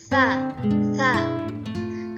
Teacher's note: Ta itu memiliki sifat hamas dan rokhawah, yang artinya mendesis dan suara tidak tertahan.